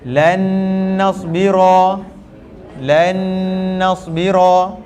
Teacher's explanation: Lan, masuk ke dalam nun yang kedua terus. Lan, dan dengung. Dengung jangan panjang-panjang sangat, 2 rakaat cukup.